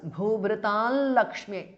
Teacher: It is followed by l, Lakshmi, la. So, the anuswara transforms to a nasal sound of la. It is l. So, it becomes Bhubhrital Lakshmi. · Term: half la with a nasal